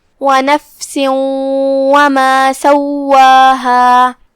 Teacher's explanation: وَنَفْسٍ وَمَا کلمت سواہا میں یہاں جو کہ واو پہ تشدید ہے، لہذا 2 حرف کی مقدار میں واو کو ادا کرنا ہے